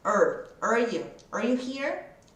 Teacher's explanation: Esse are vai ter só o som do R, que é a língua dobra lá no céu da boca.